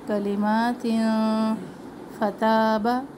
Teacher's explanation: کلمات ما کلمات نہیں پڑھنا، کلمات میم کے اوپر کھڑا زبر ایک الف کے برابر. تنوین پر اخفا کرنی ہے، آواز ناک میں جائے گی.